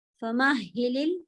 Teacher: ہا کے اندر ہا کی ساؤنڈ اچھی خاصی ہوا رکھنا ہے